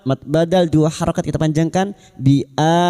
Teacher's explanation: hamzah yang bertemu mad. Mad badal dua harakat kita panjangkan.